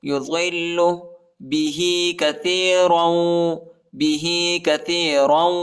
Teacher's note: ضاد کو لام کے ساتھ ملائیں گے اور لام کو شدت کے ساتھ پڑھیں گے، سختی کے ساتھ پڑھیں گے